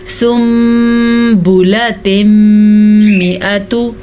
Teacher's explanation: جب کبھی نون ساکن کے بعد حرف با آ جائے، جیسا کہ یہاں پہ بھی نون ساکن کے بعد حرف با آیا تھا، تو نون ساکن کے بعد اگر با آ جائے تو نون ساکن کو میم میں بدل دیتے ہیں. اگر یہاں پہ نون ساکن ہو یا نون تنوین ہو، دونوں صورتوں میں میم میں بدل دیں گے.